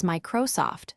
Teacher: Say Microsoft as Microsoft, stressing my.